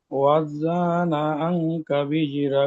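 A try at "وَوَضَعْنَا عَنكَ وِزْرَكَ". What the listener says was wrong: এখানে দুটো ওয়াও পরিষ্কার করে উচ্চারণ করতে হবে, ওয়া ওয়া, ওয়া ওয়া জা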